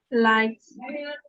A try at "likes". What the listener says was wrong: Very nice.